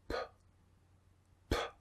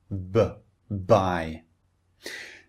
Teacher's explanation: Put your hand over your throat and you can feel the vibration. So the first sound B you can feel the vibration in your throat. The second sound P p no vibration. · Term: voiced